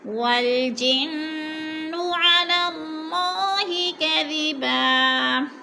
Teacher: والجن کی نون مشدد ہے، غنہ کریں گے، ناک میں آواز لے جائیں گے